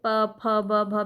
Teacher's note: ओष्ठ से आपकी जो है श्वास अवरोध होती है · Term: ओष्ठ व्यंजन